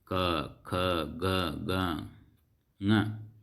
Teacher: ಕಂಠ್ಯಾಕ್ಷರಗಳು ಅಂದರೆ ಕಂಠದಲ್ಲಿ ಹುಟ್ಟುವಂಥ ಅಕ್ಷರಗಳು